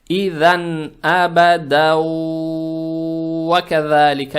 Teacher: танвин превращается в букву вау, за счет чего буква вау удваивается, и ее надо произносить удерживая. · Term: идгам с гунной